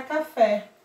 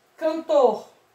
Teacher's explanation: as oxítonas a sílaba mais forte é a última